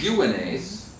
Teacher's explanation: unace is a syncopation, where the accent does not match the ictus